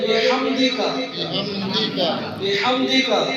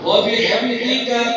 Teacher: ہا اس کو سانس نکال کے پڑھیں گے